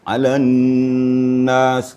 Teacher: Jadi wajibul gunnah arti wajib didengungkan. Kapasitas dengungnya adalah 3 ketukan. Ya, maksimal 3 ketukan, boleh 2 ketukan.